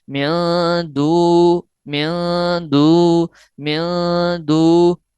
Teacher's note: نون ساکن کی آواز کو ناک کے بانسے میں چھپا لیں گے. اس طرح پڑھیں گے، من دو، من دو، من دو. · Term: اخفا یعنی غنہ